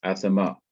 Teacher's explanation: so you don't stay long over the aleph you hurry to the last syllable so it's asama so what we have here is this um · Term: composite schwa